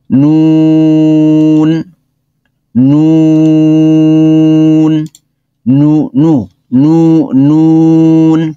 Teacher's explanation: নুন ঠোঁট গোল হবে নুন উচ্চারণে ঠোঁট গোল হবে